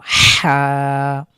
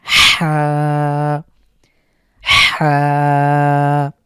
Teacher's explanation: যদি শ্বাস-প্রসা বন্ধ হয়ে আবার উপক্রম হয় ঠিক অনেকটা এরকম হা কন্ঠের মাঝখান থেকে হলকের মাঝখান থেকে বা কণ্ঠনালীর মাঝখান থেকে চাপ দিয়ে এভাবে উচ্চারণ করতে হবে